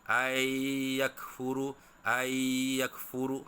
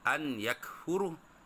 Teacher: Nun tak berbaris, itu dipanggil nun sakinah, bertemu dengan ya atau selepasnya huruf ya. Jadi nun tu dimasukkan ke dalam huruf ya, atau nun tu dihilangkan bunyinya. Jadi bunyinya ayyakfuru, ayyakfuru.